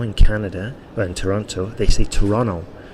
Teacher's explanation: they swallow the T, they don't bother saying it.